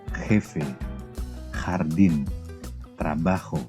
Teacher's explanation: Nanti gua huruf j di dalam bahasa Spanyol disebut hot itu pengucapannya seperti ketika kita buang dahak ada huruf H tapi diberi tekanan yang berlebihan